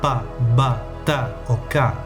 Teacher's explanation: También tenemos las occclusivas, que producen una pequeña explosión en nuestra boca, como /pa/ /ba/ /ta/ o /ka/.